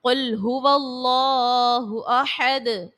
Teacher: قل میں کاف اور قوف کا خیال رکھنا ہے، قوف کو پر پڑھیں گے